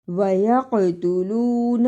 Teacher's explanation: قاف جزم کی صورت میں حرف قلقلہ ہے، یعنی اس لفظ کو بھی ہلا کر پڑھنا ہے